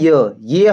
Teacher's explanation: य हमारा पूरा तालु को स्पर्श नहीं करता है। बट फिर भी हम इसे मानते हैं कि ये हमारा तालु से ही बोला जाता है।